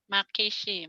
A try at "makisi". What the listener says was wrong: Ujung lidah ke ujung gigi, cadel atau lidahnya dikasih jangan ya.